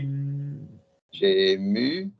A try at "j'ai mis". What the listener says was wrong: Keep going, but it was a good attempt. It was vowel joining that I liked. Try a different vowel.